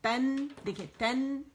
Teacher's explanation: ایک کاؤنٹ کا اظہار ہوگا نون کا